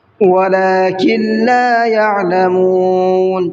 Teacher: نون کو نہیں پڑھیں گے، کاف کو ڈائریکٹ لام میں ملائیں گے، اور لام کو تھوڑا سا کھینچ کر کے پڑھیں گے۔